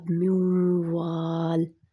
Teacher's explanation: نون کو میں نے نہیں پڑھا، اب میم جو تھا وہ واو میں داخل ہو گیا، ٹھیک ہے۔ ایک لفظ کا دوسرے لفظ میں داخل ہونا پورا ہو رہا ہے، کنڈیشن پوری ہو رہی ہے۔ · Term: ادغام